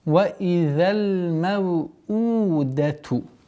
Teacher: Это долгота, естественно, долгота в размере двух огласовок даммы.